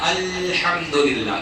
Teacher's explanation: لام میں آواز نہیں پلٹتی ہے، لام کی یہ صفت نہیں ہے